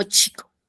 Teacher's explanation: comienza como un oclusivo y va a terminar como un fricativo. Es como que empieza como un cerrado, ¿ya?